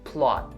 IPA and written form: plɑːt (plot)